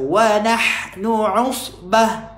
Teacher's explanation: Jangan baca usbah. Jangan baca hamzah dan alif ataupun jangan dibaca sin dekat sad ni.